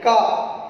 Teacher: आपकी जिह्वा ऊपर उठती है, ठीक, कंठ से आवाज निकलते हुए आती है